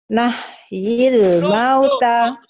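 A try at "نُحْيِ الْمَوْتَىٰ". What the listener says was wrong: No, bukan nah, no, nuhyil. Tanya panjang. Nuhyil mauta.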